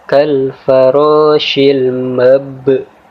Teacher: huruf ba sukun di sini kita baca dengan cara memantul tapi dengan pantulan tipis, yaitu kita baca ba sukun di sini dengan cara menekan kemudian sedikit memantul. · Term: qalqalah sughra